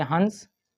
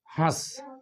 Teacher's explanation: अनुस्वर के उच्चारण में वायु केवल नाक से बाहर निकलती है, जबकि अनुनासिक का हम इस्तेमाल करेंगे तो नाक और मुंह दोनों से हवा बाहर निकलेगी। जैसे हंस अनुस्वर हो गया, हंस अनुनासिक हो गया।